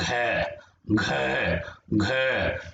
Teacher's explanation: घ, ये आवाज हमारे गले से आ रही है, कंठ से आवाज आ रही है